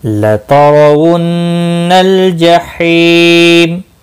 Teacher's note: रा ज़बर की वजह से पूर्व पढ़ा जाएगा, नून मुशद्दद पर गुन्ना होगा, लाम साकिन को हिलाना नहीं।